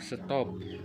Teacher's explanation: Contohnya pada kata top, diucapkan top dengan bunyi T apikodental, tetapi setelah mendapatkan bunyi S laminopalatal pada kata stop, kata tersebut diucapkan stop dengan bunyi T juga laminopalatal. Dengan demikian, dapat disimpulkan bahwa bunyi T pada kata stop disesuaikan atau diasimilasikan artikulasinya dengan bunyi S yang mendahuluinya sehingga sama-sama laminopalatal.